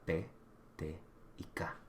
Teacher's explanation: consonantes que paran el movimiento del aire completamente y después explotan para producir un sonido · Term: oclusivas